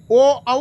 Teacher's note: ओ औ का उच्चारण स्थान कंठ और ओष्ठ से।